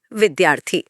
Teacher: जब हम इन्हें जोड़ते हैं तो विद्या का आखिरी आ और अर्थी का पहला अ आपस में टकराते हैं और दोनों मिलकर एक बड़ा आ बन जाते हैं।